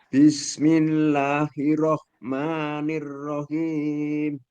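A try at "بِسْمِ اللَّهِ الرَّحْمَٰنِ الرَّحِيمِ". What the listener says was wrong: Tasdidnya ro, Pak. Jangan sampai hilang Ya, roknya kan ditasdid. Nah, maknya ini yang agak sedikit panjang, kurangi dikit. Nah, tasdid. Bismillahirrahmanirrahim. Hinya nekan dulu ke roknya. Bukan tidak seperti ini, tetapi Bismillahir.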